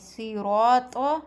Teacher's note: جب طا پر رکیں تو اسے موٹا اور گونجدار پڑھیں گے، صراط۔ تیسرا حرف ہے با، سورۃ البقرہ میں ہم نے پڑھا من قبلک، اس میں قبلی کے با پر ہلکا سا جھٹکا ہوتا ہے۔ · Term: قلقلہ